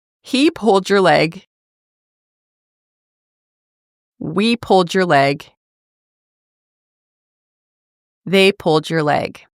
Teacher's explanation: You'll notice that the emphasis is on the second word, which is a verb, pulled